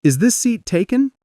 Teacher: Rising tone at the end, showing it's a question.